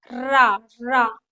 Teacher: र कंठ और तालु का प्रयोग होता है। र लुंठित व्यंजन है र क्योंकि इसको बोलने में जुबान जुबान जो है आपकी घूमती है।